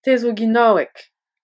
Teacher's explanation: Le G de Ginawek se durcit et se prononce K car il est suivi d'un silence.